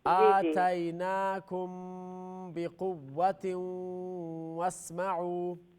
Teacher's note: میم ساکن کے بعد با ہے تو اخفا شفوی